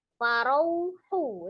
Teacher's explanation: Farau ada waw sukun sebelumnya fathah di huruf ro, maka itu madlin sama, tapi wawnya disempurnakan bunyi u ya. Tidak dipanjangkan karena dia diwasol, kecuali kalau dia diwakafkan maka dia dibaca panjang.